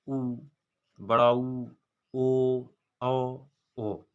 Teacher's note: जब आप ऊ को बोलेंगे, ऊ का जैसे आप उच्चारण करेंगे तो आपके होंठ गोला आकार में हो जाएंगे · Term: व्रतमुखी